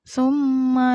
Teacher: ini namanya gunah karena ada mim yang bertasdid